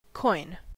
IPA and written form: kɔɪn (Quoin)